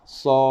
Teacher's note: huruf muqatta'ah ini dibaca dengan kadar 6 harakat